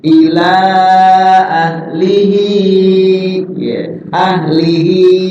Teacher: Contohnya ini, ahlihi ketemu alif, ilah, maka menjadi matnya tawilah. Maksud tawilah itu dibaca ya panjang, melebihi mad tabi'i. Ila ya boleh 4, boleh 5 di situ.